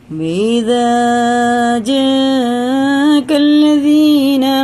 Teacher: مد متصل ہیں، 4 الف کے برابر کھینچیں گے کیونکہ مد کے بعد حمزہ آ رہا ہے